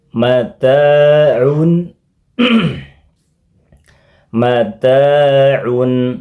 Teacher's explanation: tanwin un dibaca dengan samar-samar dan ditahan lama dua harakat. Dibaca samar-samar.